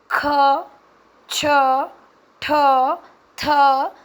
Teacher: आप पाएंगे कि मुंह से हवा बाहर निकल रही है और उस समय पर य दबाव भी पड़ रहा है ऐसे